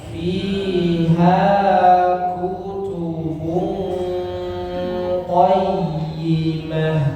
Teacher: I dengan ha panjangnya sama ya. dua harakat